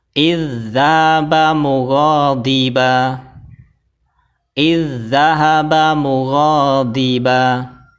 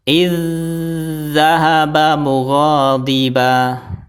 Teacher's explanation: zal yang pertama dimasukkan ke huruf zal yang kedua sambil ditekan. · Kalau ditekan itu ada tasdidnya, kalau ditahan ya ditahan agak lama, itu namanya ditahan. Jadi kalau idgham mutamatsilan itu cukup ditekan tapi tidak ditahan.